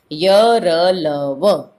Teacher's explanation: इनके उच्चारण में जीभ मुंह के किसी भाग को पूरी तरह स्पर्श नहीं करती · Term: अंतस्थ व्यंजन